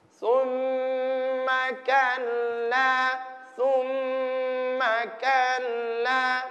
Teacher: Ya, gunnah itu dengungan. Berapa lama dengungannya? Ada dua ketukan. Dua kali ketukan.